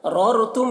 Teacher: ररतुम यहाँ पर दोनों रा को पुर पढ़ेंगे। मीम के बाद वाव है तो मीम में इजहार शफवी होगा, मीम को ज़ाहिर करके जल्द पढ़ेंगे।